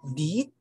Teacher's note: E sound is produced when the tongue moves forward, the height of the jaw is high, and the duration of the sound is long